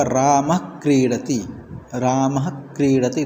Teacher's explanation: विसर्ग जो है वो अर्ध उच्चारण होगा, आधे उच्चारण के जैसा होगा, आधा विसर्ग होगा वह। ये जिह्वामूलीय के अंतर्गत आता है।